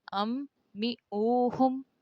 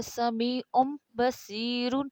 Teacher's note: نون کے بعد حرف با آیا ہے، وہاں نون کی آواز بدل کر میم ہوگی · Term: انقلاب